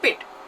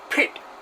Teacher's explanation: whenever the P comes at the beginning of the word it has to be pronounced with the extra aspiration